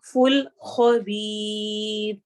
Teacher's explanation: تی نہیں پڑھنا، توئی، اور لمبا بھی کرنا ہے، فل خبیر، آخر میں را کو ہم نے باریک پڑھنا ہے